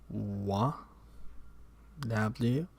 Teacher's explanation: Produced by moving the back of the tongue towards the velum and at the same time rounding the lips.